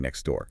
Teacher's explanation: next door often loses the T